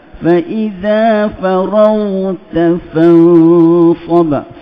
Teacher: Ghin tu rakhawahkan dia dengan isti'la dia.